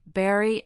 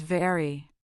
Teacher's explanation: Berry uses that voiced lip pop, while very uses your teeth and lower lip for a continuous sound.